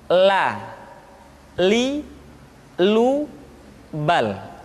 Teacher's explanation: huruf la diucapkan dengan mengangkat ujung lidah kita, dengan disentuhkan dengan langit-langit.